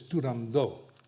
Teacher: Dice Turandot y no como lo pronunciamos los ingleses. Puccini was adamant that the T at the end of the word should not be pronounced.